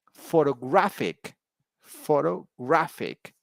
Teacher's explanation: in the third word the word stress is on the third syllable